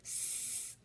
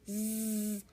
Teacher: when you say s our neck doesn't move when we say Z our neck does move